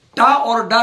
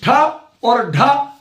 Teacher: जैसे टा, डा, ये 2 अल्प प्राण है, अनुनासिक को नहीं लीजिए। टा और डा क्या है? अल्प प्राण। ठा और ढा ये क्या है? महाप्राण है।